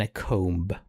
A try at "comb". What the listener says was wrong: You don't pronounce the B.